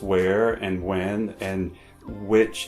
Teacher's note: hardly anyone pronounces the h sound in words such as where when or which